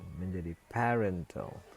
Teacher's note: Sebelumnya stresnya itu ada pada pa, kemudian karena dia menerima suffix al, maka stresnya pindah ke ren menjadi parental. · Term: stres itu shift